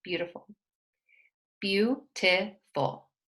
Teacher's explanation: the word stress falls on the first one, beau.